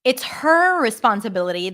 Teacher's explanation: if I stress it by the way it's her responsibility then I would fully pronounce the h